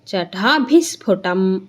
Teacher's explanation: ಬಿ ಆದಮೇಲೆ ವಿಸರ್ಗ ಇದೆ ವಿಸರ್ಗದ ಮುಂದೆ ಸ ಇರೋದ್ರಿಂದ ಬಿ ವಿಸರ್ಗ ಏನಾಗುತ್ತೆ ಬಿ ಮುಂದೆ ಇರೋ ವಿಸರ್ಗ ಅರ್ಧಸ ಆಗುತ್ತೆ · ಬಿ ಮುಂದೆ ಇರೋ ವಿಸರ್ಗ ಅರ್ಧ ಸ ಆಗುತ್ತೆ. ಚಟ ಭಿಸ್ಫುಟಂ ಆಗುತ್ತೆ.